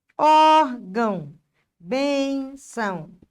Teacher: terminou em som nasal e é paroxítona.